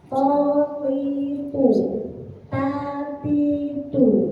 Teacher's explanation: Tapi kalau harokatnya kasroh dan doma dengan tempat keluar huruf yang sama, maka nanti tidak akan ada bedanya kecuali kita meletakkan atau mengeluarkan huruf sesuai makhrajnya. Dan kalau to itu tebal dengan mengangkat lidah bagian belakang